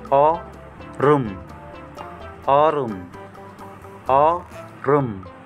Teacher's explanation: Kaya maging ito po na ending consonant maging R sound. Kasi po sinusundan ng vowel.